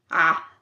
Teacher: This sound is made by making an ah sound and constricting your throat. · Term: ain